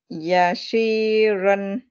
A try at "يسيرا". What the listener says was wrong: Not she. Yasi. It's a scene.